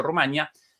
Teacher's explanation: La pronunciación Rumanía, a la que es mayoritaria en España y coincide con la pronunciación de este topónimo en la lengua rumana, pero en amplias zonas de América es más frecuente la pronunciación con diptongo, a la que corresponde la grafía sin tilde Rumania.